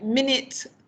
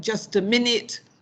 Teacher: there we have a stress on min, okay, but the second syllable it, that's an I sound with a weak form